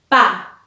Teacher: Ambos labios se unen para producir ese sonido. Entonces, es un ejemplo del modo labial.